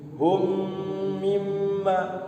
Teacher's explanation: Mim mati ketemu mim, maka dilamakan, ditahan, diidghamkan. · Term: idgham mimi